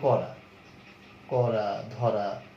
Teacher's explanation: যেমন আমরা যদি বলি করা, করা, ধরা, এইসব শব্দগুলোতে হ্যাঁ রটা কিন্তু কি ফ্ল্যাট থাকে, র অর্থাৎ জিভটা তালুতে টাচ করে উচ্চারিত হয়